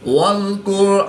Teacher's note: را ساکن سے پہلے کاف پر پیش ہے تو را کو پورے موٹا پڑھیں گے۔